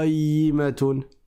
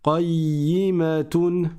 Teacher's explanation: on n'oublie pas la shad et je n'invente pas une prolongation ici à cause du ya